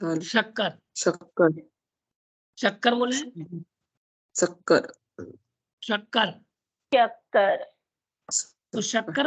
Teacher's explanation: शक्कर बोलते समय सा में जिवा कहां आना चाहिए तालू के पास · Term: तालब सा